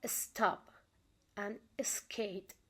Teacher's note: the unaspirated consonant which appear immediately after the letter S